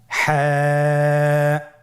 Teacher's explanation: হা হরফটি উচ্চারিত হবে কণ্ঠনালীর মধ্যখান হতে। গলা চিপে ধরে আপনি উচ্চারণ করুন।